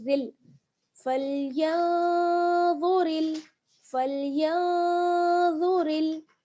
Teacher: रा को हम लाम के साथ मिलाएंगे बारीक करते हुए, क्योंकि रा पर जेर है